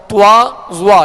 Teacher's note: ہونٹوں کو جب گول کرتے ہیں تو توا اور زوا، یعنی اس میں ایک حرف کا اضافہ ہو جاتا ہے واو کا، توا زوا، یعنی ہونٹ گول کریں گے تو اس طرح یہ ادا ہوگا، جو کہ غلط طریقہ ہے، اور صحیح طریقہ یہ ہے کہ بغیر ہونٹ گول کیے ان کو ادا کیا جائے اور پر اور موٹا ادا کیا جائے.